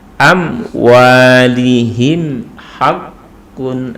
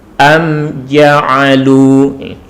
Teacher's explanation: Jadi tidak ada dengung di sini. Mim sukun bertemu dengan huruf jim. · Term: izhar syafawi